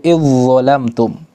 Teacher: Seakan-akan huruf dzal di sini enggak ada. Yang ada huruf dha dan beri dia tasydid. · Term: idgham